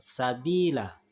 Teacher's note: fathah tanwin pada akhir kata jika wakaf atau berhenti dibaca mad sehingga harkat tanwin tidak lagi. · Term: mad iwad